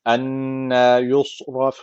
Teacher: Enna derken şeddeli nun var. Mutlaka bir elif tutuyoruz.